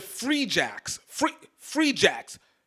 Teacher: Big first, soft second syllable.